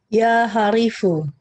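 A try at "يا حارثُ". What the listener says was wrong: ya Harithu. Haknya yang panjang. Iya, haknya yang panjang. Terus itu huruf ta ya, bukan huruf fa, tapi huruf ta. Harithu. Ya Harithu.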